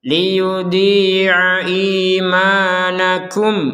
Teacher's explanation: ada mim sukun, maka setelah itu adalah huruf hamzah. Maka kita membacanya dengan jelas.